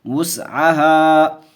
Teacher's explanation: وس پڑھیں گے، اس نہیں، وس، واو کی آواز آنی چاہیے